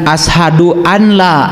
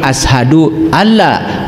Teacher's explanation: Kalau idgham berarti nun mati ketemu ya masuk. Nun mati ketemu lam masuk. Jangan ashadu anla tapi ashadu alla walaupun di situ ada nun. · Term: idgam bila gunah